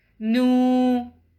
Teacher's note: It has sukoon sign, and it's preceded by a matching haraka, which is dhamma. So we'll prolong the sound of noon for 2 counts · we'll prolong the sound of noon for two counts